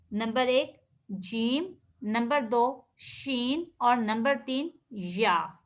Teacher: ज़बान के साथ कहते हैं, ज़बान का जब दरमियानी हिस्सा, ज़बान का ये दरमियानी हिस्सा, ये वाला, ये एरो के नीचे ये जहाँ पर ज़बान लिखा हुआ है, ठीक है, ये जो दरमियानी हिस्सा है इसको हम कहते हैं शजरुल लिसान। ज़बान का जब दरमियानी हिस्सा अपने मुकाबिल ऊपर के तालु से लगेगा तो यहाँ से 3 हरूफ अदा होंगे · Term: हरूफे शजरिया